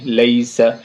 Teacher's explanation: تو یا لین ہو جائے گی، لیس، جلدی سے بولیں گے مدہ نہیں